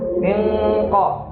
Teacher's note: Kalau yang nun sukun bertemu qaf atau kaf dibacanya misalnya mingko, pakai eng. Karena ketemu nun sukunnya bertemu dengan qaf. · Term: ikhfa